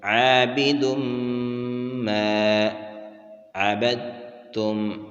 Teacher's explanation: دال کے بعد تنوین ہے اور اس کے بعد میم حروف یرملون میں سے ہے، یہاں پر ادغام ہوگا